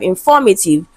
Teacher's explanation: The stress is on the second syllable in form. Right?